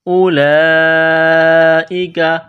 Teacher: کاف زبر کا، کاف کو باریک کرنا ہے۔ اولئک، یہاں اس واو کو نہیں پڑھنا۔